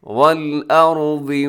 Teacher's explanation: والارض میں کیا ہے را، آپ نے موٹا پڑھنا ہے، اور آگے حرف ضاد اس کو بھی آپ نے موٹا پڑھنا ہے۔